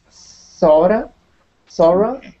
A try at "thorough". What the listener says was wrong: Thorough. Thorough. So it's an O sound and not an A sound. But the British would say thorough. Thorough. so we say thorough.